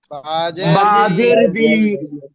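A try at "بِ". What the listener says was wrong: আচ্ছা বি তে কে কে যেন টান দিছে ভাই, বি তে তো টান হবে না, এটা তো একবারে সহজ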